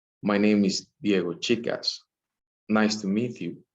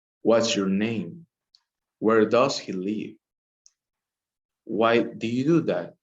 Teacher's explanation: the intensity of the voice is lower at the end of the sentence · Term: falling intonation